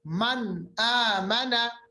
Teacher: मन आमना, मन नून की आवाज जाहिर करके आगे चले गए। ठीक है, कोई गुन्ना नहीं किया, नून की आवाज को हमने नाक में मतलब नहीं लिया, नाक के बासे में उसको नहीं लिया, डायरेक्ट मन आमन, नून साकिन के बाद हमजा, हमजा भी हरूफ हल्की।